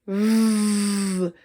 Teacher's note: Now put your hand on your throat so you can hear and feel when you say V. Your voice box is vibrating when you make the V sound.